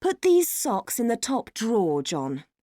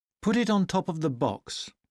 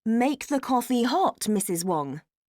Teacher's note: when you command you have falling intonation